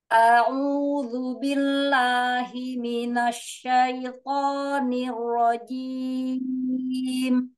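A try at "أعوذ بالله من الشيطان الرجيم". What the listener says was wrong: Hati-hati, lamnya jangan terlalu tebal. Lamnya tidak terangkat ya. Mila lah, jangan mila, jangan jangan terangkat ya lidahnya ya. Jadi lam ini kan sebenarnya hurufnya istifal ya. Istilah itu kalau dia di lafaz Allah aja di lafzul jalalah yang berharokat sebelumnya fathah ataupun dhamma.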